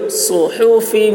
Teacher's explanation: صاد کی آواز سخت ہوگی، ہا حلق سے